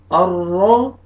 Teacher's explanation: ये रॉ को पुर करेंगे, रॉ के ऊपर ज़बर है